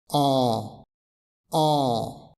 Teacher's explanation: son nasal ça signifie premièrement que il y a de l'air qui s'échappe par le nez